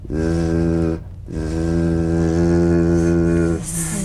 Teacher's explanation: The Z vibrates in that very small open space between the tongue and the upper teeth. Right in here.